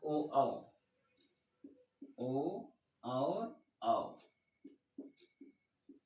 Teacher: कंठ प्लस ओष्ठ दोनों है। कंठोष्ठ ओ औ का उच्चारण स्थान क्या है? कंठ और ओष्ठ दोनों है।